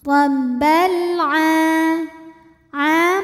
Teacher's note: alif lam menghadapi huruf qamariyah yaitu ain, maka lam dibaca jelas atau disebut dengan idhar qamari.